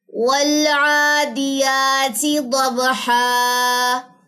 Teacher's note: یہاں پہ حمزہ وصلی حذف ہو گیا، پڑھا نہیں گیا